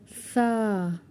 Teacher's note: When our tip of the tongue will touch the upper two teeth edges, this is the articulation point of Sa. Sa. And you will say Sa very softly, like you will eat the ice cream or any soft thing like jelly.